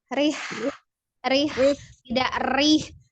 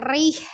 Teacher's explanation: Ro itu kalau dia kasroh dia tipis ya.